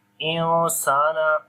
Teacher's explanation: on the noon here we make ikhfa sound